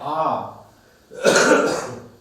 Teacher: Next विवृत्त की यदि बात की जाती है तो यहां पर आता है आ। यानी आ का जब उच्चारण करते हैं तो मुंह पूरा खुल जाता है, इस कारण से यहां पर विवृत्त कहेंगे।